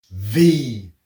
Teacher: V is the same as F but voiced, so 2 fingers.